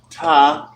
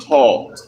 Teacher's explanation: The difference is the ta is dental, made with the teeth, ta, tongue on the teeth, and taw is guttural. It comes from the throat.